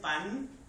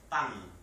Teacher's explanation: No es pan, es pan. Es decir, la N la estamos pronunciando hasta la úvula